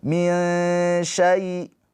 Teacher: Ditahan dua harakat nun sukunnya dengan samar. Ya, jangan min tapi min sya mendekat ke huruf sya. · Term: ikhfa hakiki